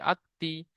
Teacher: হামজার উপরে জাবার আছে, জাবারটি হারাকাত, হারাকাতে পড়াকে তাড়াতাড়ি পড়তে হয়, টান দেওয়া নিষেধ।